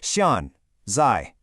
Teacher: Xiànzài uses two sharp falling fourth tones. Try saying it out loud with a sharp downward emphasis.